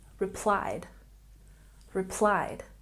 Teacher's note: We have a stress here on the second syllable.